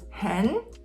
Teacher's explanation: when they're separate they're both tone three but if you put them together the first tone three turns into tone two so hen becomes hen and then you have how which stays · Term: tone Sandy